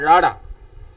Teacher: ਰਾੜਾ ਜਿਸ ਨੂੰ ਫਟਕਵਾਂ ਜਾਂ ਲਟਕਵਾਂ ਵੀ ਕਿਹਾ ਜਾਂਦਾ, ਜੀਭ ਉੱਠਦੀ ਹੈ ਤਾਂ ਬਿਲਕੁਲ ਥੱਲੇ ਡਿੱਗ ਪੈਂਦੀ ਇੱਕੋ ਦਮ, ਤਾਂ ਮੂੰਹ ਦੇ ਵਿੱਚੋਂ ਇਸ ਧੁਨੀ ਦਾ ਉਚਾਰਨ ਹੁੰਦਾ ਰਾੜਾ।